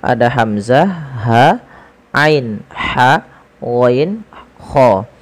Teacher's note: Huruf yang keluar dari tenggorokan ada 6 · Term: huruf-huruf halq